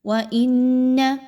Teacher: وَإِنَّ، حمزہ اور نون کو ملاتے ہوئے نون مشدد کا غنہ، آواز جو ہے وہ ناک میں کچھ دیر کے لیے ٹھہرے گی